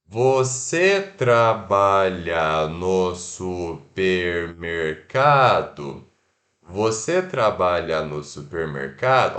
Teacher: no português a gente vai separar pergunta e resposta apenas por entonação